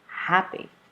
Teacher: the first word happy two syllables right you're going to stress the first one